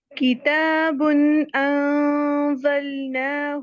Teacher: کتابن کے آخر میں ہم نے دیکھا تھا تنوین با کے اوپر ہے، تو اس کے بعد حروف حلقی میں سے ہمیں حمزہ مل گیا، تو اظہار کیا اور مکمل صفات کے ساتھ بغیر غنہ کے اظہار کیا